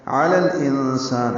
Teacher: عین وسط حلق سے ادا کریں گے، لام کو لام سے ملائیں گے. انسان میں نون ساکن کے بعد سین آنے کی وجہ سے اخفا ہے، سین پر کھڑا زبر یا الف لکھا ہوتا ہے، تو دونوں طرح الف مدہ مد اصلی ہے.